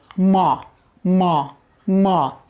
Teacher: ओष्ठ की भी मदद आ रही है, म, म, म, ओठ स्पर्श कर रहे हैं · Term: अनुनासिक